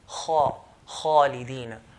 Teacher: The Arabs used to pronounce kha with heaviness by elevating the back of the tongue.